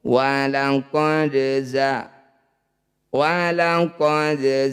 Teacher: Qalqalah itu memantul, sugro itu kecil. Jadi dal ini dipantulkan tapi kecil saja pantulannya. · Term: qalqalah sugro